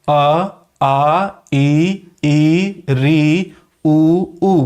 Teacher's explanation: इसको याद रखेंगे प्रकृति या स्वभाव के आधार पर, क्योंकि इनका जब उच्चारण करते हैं तो प्राणवायु केवल मुख से बाहर निकलती है, नाक से नहीं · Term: निरनुनासिक स्वर